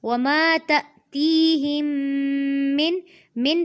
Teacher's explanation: وما تأتیہم من پہ دیکھیے یہاں پر اظہار ہوگا، یہاں پر نہ تو اخفا کرنا ہے اور نہ ہی غنہ کرنا ہے، یعنی کہ نون کی آواز کو واضح کر کے پڑھنا ہے